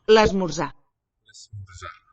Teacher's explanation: Silent R there it seems.